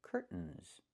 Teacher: It's curtains with a real T, curtains, or I can use a stop T and say curt, stop the air, put the tongue up, curt, mns, and go directly to the N, curtains.